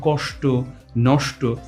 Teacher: স এর উচ্চারণ স্থলটা বদলে গেছে এটা হচ্ছে মূর্ধন্য স এর প্রকৃত উচ্চারণ